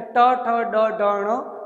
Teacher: ट वर्ग का उच्चारण स्थान भी मूर्धा है, जिसमें ट ठ ड ढ ण का उच्चारण है वह मूर्धन्य रहेगा।